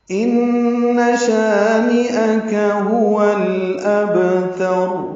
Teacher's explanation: ان شانئک هو الابتر، ان میں نون مشدد ہے، اس میں غنہ ہے، شانیہ کے میں شا الف مدہ ہے، 2 حرکات لمبا کریں گے۔ اب نون مشدد پہ جو غنہ ہے یہ بھی 2 حرکات ہے، شا الف مدہ ہے یہ بھی 2 حرکات ہے، وہ 2 حرکات آواز کو ناک کے ماسے میں روکنا ہے، ان شا یہ 2 حرکات آواز کو لمبا کرنا ہے، شانیک نون کو جلدی پڑھیں گے معروف طریقے سے۔